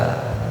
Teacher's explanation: ini hamzah ya, sa'a bukan ain